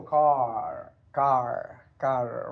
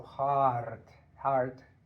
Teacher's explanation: speakers pronounce R in all positions like most American varieties but unlike many British varieties